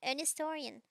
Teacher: i don't pronounce h so sometimes my words sound a bit funky because of that